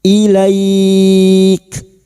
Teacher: huruf kaf ini memiliki sifat hamas dan siddah. Maka pada saat dibaca waqaf bunyinya ilaik.